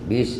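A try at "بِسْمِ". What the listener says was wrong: Bukan bis. Bis. Bis. Bis. Itu masih kecampur dengan shin. Bukan bis. Bis. Bis.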